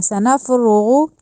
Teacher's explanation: سنفرغ کا جو را اور غین ہے وہ دونوں جو ہے ان کو موٹا کر کے پڑھنا ہے، پر کر کے پڑھنا ہے.